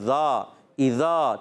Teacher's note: ذال الف زبر ذا، ذال کا مخرج زبان کا سرا اور اوپر کے دانتوں کے اندرونی کنارے یا بیرونی کناروں دونوں سے ادا کر سکتے ہیں